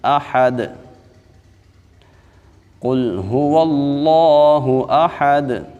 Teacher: هو اللہ احد، حمزہ کو خوب سختی سے ادا کریں گے اور ہا کو باریک پڑھیں گے، اور دال میں ہم نے قلقلہ کرنا ہے کیونکہ دال حرف قلقلہ میں سے ہے